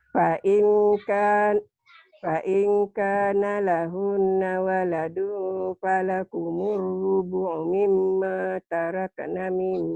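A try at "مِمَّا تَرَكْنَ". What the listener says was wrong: Tarok, jangan tarak. Tarok. Tarok. Mimma tarokna Mimma tarokna.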